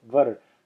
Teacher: As short as you can possibly make it, var. Go immediately from the va to the ra with a little bit of a in between.